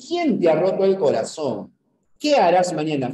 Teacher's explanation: A la entonación descendente, o sea, hacia abajo. A ese tonema descendente se la conoce como cadencia